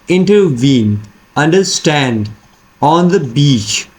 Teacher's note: So it means that we have 2 unstressed, okay, and the last one is stressed. So a foot in which we have 3 syllables, the first 2 are unstressed, the last one is stressed. So this is what we call as anapestic, right?